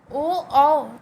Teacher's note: और देखेंगे ओ औ, इसका उच्चारण स्थान ओष्ठ प्लस कंठ अर्थात कंठोष्ठ। ओ औ का उच्चारण स्थान कंठोष्ठ है, कंठ और ओष्ठ से होता है।